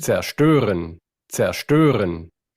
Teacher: esa ST no es una T, es realmente una SH. O sea, ahí tendríamos que ver que esa S se convierte en SH.